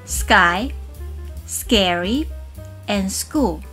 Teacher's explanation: Right after /s/ sound, those /k/ sounds get similar to this Korean /ㄲ/ sound.